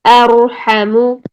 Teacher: زبان کی جڑ اوپر اٹھانے کی وجہ سے ہماری آواز میں ٹکراؤ پیدا ہو رہا ہے جس سے ہماری آواز موٹی نکل رہی ہے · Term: موٹی را